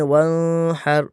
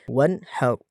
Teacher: نون کو واضح پڑھنا ہے، ظاہر کر کے پڑھنا ہے، ناک میں آواز نہیں جانی چاہیے، بالکل صاف نون کو ادا کرنا ہوگا۔ ہم میں سے اکثر پڑھتے ہیں ون ہر، تو یہ غلط ہے، اور اگر ہم اس کو ون ہر پڑھتے ہیں تو یہاں پر ہا کی ادائیگی ہماری غلط ہو جاتی ہے۔